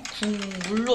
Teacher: 이 기역이 비음, 미음을 만나서 이음으로 바뀌는 거예요. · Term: 비음화